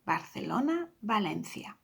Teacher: Okay, afterwards we have two cities that one starts with a B and another one with a V, but another rule was the letter V is pronounced the same as a B. So Barcelona, and then we have Valencia, exactly the same, Barcelona, Valencia.